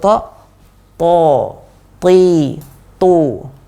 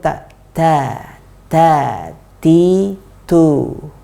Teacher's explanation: Yang pertama tadi to naik lidah belakang, sedangkan ta tidak naik. Kemudian to dia keluar sedikit angin, kalau ta dia keluar banyak angin. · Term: itbaq